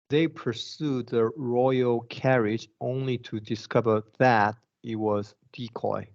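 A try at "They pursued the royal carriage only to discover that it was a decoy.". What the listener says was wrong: That's right. Perfect.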